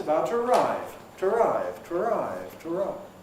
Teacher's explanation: Here it's before a vowel, as in arrive. So we can get compression to arrive. The train is about to arrive. To arrive, to arrive, to arrive. We've lost a syllable there.